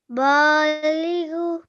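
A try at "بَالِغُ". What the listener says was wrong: Mashallah. Very nice. Next one.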